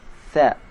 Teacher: Huruf tha, cara mengucapkannya ujung lidah sedikit dikeluarkan. Tha. Tidak terdengar suara S.